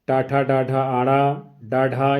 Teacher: ट ठ ड ढ ण ड ढ इनका उच्चारण स्थान है मूर्धन्य।